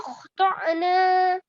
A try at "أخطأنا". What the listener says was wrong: Again, I heard the ayn sound. Don't do the ayn sound. Just softly.